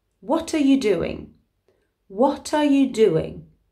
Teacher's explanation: the t of what has actually moved over to the next word